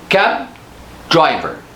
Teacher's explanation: Now notice that I held the sound and I did not release it.